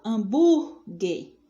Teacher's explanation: veja que o bu é o mais tônico, é o mais alto. Então, você circula o bu, tá? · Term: sílaba tônica